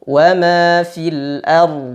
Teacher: aliran suara pada dad lebih panjang daripada aliran suara pada ro ya karena ro dia bainiah sedangkan Dod rakhawah suaranya mengalir lebih